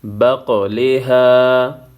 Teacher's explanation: ها الف زبر ها، بقلها. بقلها قاف ساکن ہے، یہاں پہ قلقلہ ہوگا